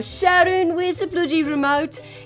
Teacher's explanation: it's a very nasal kind of an accent